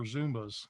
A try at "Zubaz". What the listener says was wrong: There's no M in it. It's